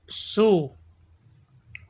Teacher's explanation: سین زبان کی نوک اور دونوں دانتوں کے اندرونی کنارے سے ادا ہوتا ہے